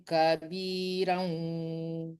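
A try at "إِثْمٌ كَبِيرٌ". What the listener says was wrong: Kabirun, bukan raw ya. Romah itu tanwin romah.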